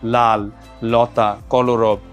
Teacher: জিওভার অগ্রভাগটা মুখের মাঝামাঝি দন্তমূলে ঠেকিয়ে রেখে জিওভার দুই পাশ দিয়ে বাতাসটা বের হয়ে যায় · জিহ্বার অগ্রভাগটা মুখের মাঝামাঝি দন্তমূলে ঠেকিয়ে রেখে জিহ্বার দুই পাশ দিয়ে বাতাসটা বের হয়ে যায়। ল যখন আমরা উচ্চারণ করি তখন আমরা দেখতে পাই যে এইভাবে হয়তো দুই পাশ দিয়ে বায়ু নিঃসৃত হয় বলে এটাকে পার্শ্বিক ধ্বনিও বলা হয়ে থাকে। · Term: পার্শ্ববিক ধ্বনিও